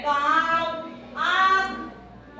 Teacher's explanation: तो हवा नाक और मुख दोनों से निकलती है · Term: अनुनासिक